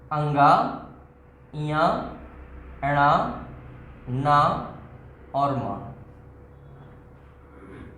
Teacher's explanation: लेकिन मित्रों हिंदी में इन वर्णों को हम पंचम वर्ण में मानते हैं, बल्कि संस्कृत में स्पष्ट उल्लेख है कि नासिका चा मीन्स और इन वर्णों का उच्चारण नासिका से होता है, मतलब पूर्वोक्त स्थान के साथ साथ नासिका से होता है